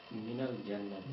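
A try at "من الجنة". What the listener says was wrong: Minal jannati, right?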